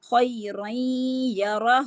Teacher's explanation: جو اس کا نون ہے نا، جو اس کے خیرن کا نون ہے وہ اس یا جو نیکسٹ یرملون کا یا ہے نا اس کے اندر مرج ہو جاتا ہے. ٹھیک ہے، اور مرج ہو کے نون ساکن کا غنہ باقی رہ جاتا ہے. ٹھیک ہے، اور اس کو کہتے ہیں ادغام. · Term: ادغام مع الغنہ